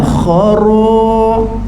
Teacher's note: Kha sifat dia panjang. Khara getar ra tebal ra lencong